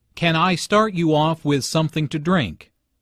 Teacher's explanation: Since this is a yes/no question, the intonation rises at the end.